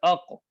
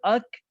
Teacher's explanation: قاف کو نکالنا ہے موٹے طریقے سے اور کاف کو باریک · کاف کی ادائیگی کا طریقہ یہ ہوگا کہ قاف کے مخرج سے ذرا ہٹ کے منہ کی طرف، اب حمزہ کاف زبر اک، حمزہ قاف زبر اق، ادا کرنے سے یہ معلوم ہوگا کہ قاف نکلتا ہے زبان کی جڑ اوپر کے تالو سے، اور کاف نکلتا ہے کہ زبان کی جڑ سے تھوڑا سا ہٹ کے یہ کاف ادا ہوتا ہے